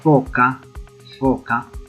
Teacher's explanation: Nos damos cuenta que lo que actúa de mi boca son el labio y el diente, y el sonido tiene una suavidad, se suaviza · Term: fricativo